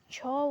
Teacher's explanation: छ वर्ण का उच्चारण तालु से होता है